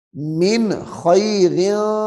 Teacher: یعنی غنہ کر کے نہیں پڑھنا، کیوں کہ نون ساکن کے بعد حروف حلقی آ رہا ہے ، من خیر ایسے پڑھیں گے تو غلط ہو جائے گا،